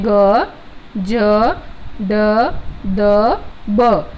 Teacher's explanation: तो ये सघोष अल्प प्राण है, मतलब प्रत्येक जो वर्ग होता है, प्रत्येक वर्ग का जो तीसरा वर्ण होता है, ठीक है, वो किस में आता है, सघोष अल्प प्राण में आता है